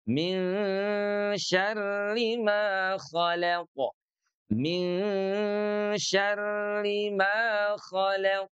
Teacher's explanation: Min ditahan 2 ketukan ya, 2 harokat.